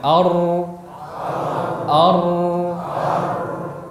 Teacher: Tidak sempurna tertahannya, tidak juga sempurna mengalirnya. Jadi secara makhraj dia rapat, namun pada huruf ra ini terjadi aliran suara yang sedikit dari celah yang terjadi karena sebab takrir, sifat getaran. · Yang jelas huruf ra dia tidak tertahan, tidak juga mengalir. Dia di antara keduanya. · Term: bainiyah